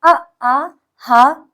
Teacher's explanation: अ आ ह और विसर्ग इन चारों का भी उच्चारण स्थान कंठ से होता है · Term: कंठ ध्वनि